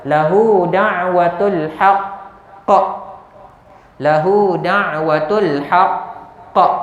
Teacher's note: Oleh kerana qaf ni huruf qalqalah dan dia ada syaddah, dia ada sabdu, kita berhenti pada perkataan tersebut, maka bunyi lantunan ataupun bunyi qalqalah itu ekstra, lebih sedikit.